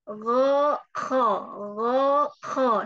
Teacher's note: Yang naik cuma pangkal lidah, tidak disertai lidah-lidah yang lain. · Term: naik pangkal lidahnya